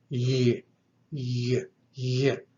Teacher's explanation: The yama is a voiced velar aspirate. It has some breath mixed with it. In other words, it allows the breath to go through, but there's a narrowing of that cavity and a vibration of the voice box.